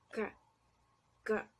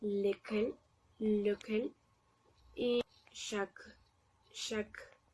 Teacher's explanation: Este es un fonema velar y como su nombre lo indica, nuestra lengua, bueno, la parte de atrás de nuestra lengua, más o menos, se posiciona en el velar y dejamos salir un poquito de aire de la forma que pueda salir un poco.